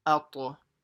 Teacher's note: And it has to be a slight echo sound on the ta because it's a qalqala.